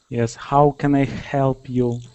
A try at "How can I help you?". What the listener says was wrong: So I can still feel your tongue is kind of still itching. It still wants to arch up like that. So just keep telling it what to do.